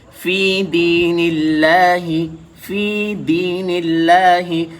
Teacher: لفظ اللہ سے پہلے نون کے نیچے زیر ہے تو لفظ اللہ کا لام باریک ہو کر پڑھا جائے گا